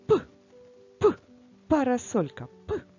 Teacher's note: губки закриті протягнути проспівати не можемо це означає що це приголосний звук парасольку Ми теж розфарбуємо А